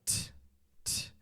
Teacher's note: you want to get that little whistle when you release it